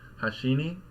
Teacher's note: on the last one as opposed to something like hashini where there's no drop you just keep kind of rising or staying sort of high in Pitch across the whole end of the word and the particle